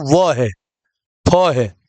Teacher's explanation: दंतोष्ठ यानी दांत और ओठ दोनों का इस्तेमाल होता है, वो व है, फ है।